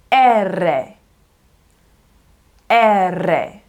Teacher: it's going to be an E sound followed by that rolled R and then another E sound